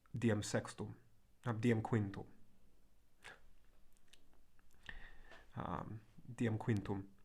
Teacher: At the end of the word, it kind of nasalizes the vowel and kind of gets swallowed.